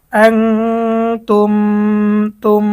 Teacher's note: মিম সাকিনের পরে যদি মিম আসে তাহলে ওই মিম সাকিনকে গুন্নাহের সাথে মিলিয়ে পড়তে হবে। এখানে মিম সাকিনের পরে মিম আসছে, এই জন্য আমরা গুন্না সহ মিলিয়ে পড়ব। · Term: ইদগাম